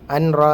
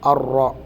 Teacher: നൂനിന് ശേഷം വരുന്നത് ലാമു റാവും വരുമ്പോൾ നമുക്കറിയാം അവിടെ നൂനിനെ ഉച്ചരിക്കാൻ പാടില്ല, അത് ഇരട്ടിച്ച് മണിക്കാതെയാണ് അത് ഓതേണ്ടത്.